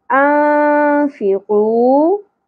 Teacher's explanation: نون ساکن کی آواز کو چھپانا بھی ہے اور ناک میں ٹھہرا کر کھینچنا بھی ہے، غنہ بھی کرنا ہے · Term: اخفا مع الغنہ